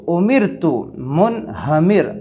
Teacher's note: نیچے را کو باریک پڑھنے کی مثالیں آ رہی ہے، امرتو، امرتو، حمزہ پیشو، میم را زیر مر، تا پیش تو، امرتو، منہمر، را ساکن سے پہلے امرتو کے اندر زیر ہے، اس لیے را باریک ہوں گی،